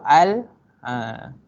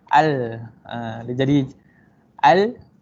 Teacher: Huruf lam ni kalau kita tengok dari segi makhraj dia, lam ni dekat langit hujung, dekat gigi atas dekat gigi atas kat langit. Lam, kalau kita sebut al, lidah kita akan bergulung ke atas